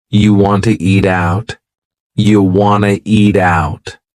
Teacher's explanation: we have reduced want to to become Wana this is a common reduction in English